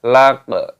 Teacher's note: Qaf sukun, qalqalah dipantulkan suaranya